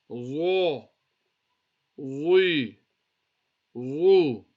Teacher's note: the za is a musta'liya letter, so we read it with a full mouth. You can feel it that it's a different letter.